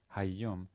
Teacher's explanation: Now, again, if I say hayom, you'll hear the lengthened yud